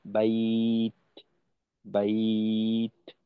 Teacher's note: যখন পুরোটা বন্ধ প্রথমে, তারপর যখন ওইখান থেকে পৃথক হব, পৃথক হওয়ার সময় একটু বাতাসের প্রেসার দিয়ে একটু বাতাস বাইরে আনা।